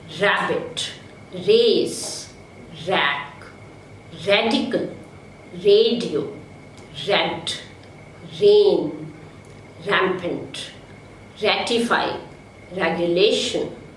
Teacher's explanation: Step number 3, the air from the lungs escapes through the space between the tip of the tongue and the post-alveolar region without any friction. This sound is voiced. So we have R as frictionless, voiced continuant. So these words have R in the initial position.